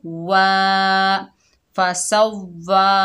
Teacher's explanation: वाव होंठों की ना तमाम गुलाई से अदा होगा। फ़सव्वा, हा के ऊपर पेश, हा सीने से अदा होगा।